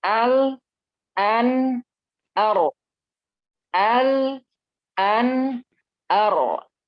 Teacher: Jadi al itu lebih dimajuin. An, nun lebih di ke belakang lagi dikit, ra lebih di ke belakangin